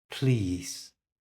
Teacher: When I say please, it comes down in pitch.